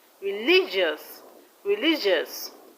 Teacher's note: Now religious, the stress is on li.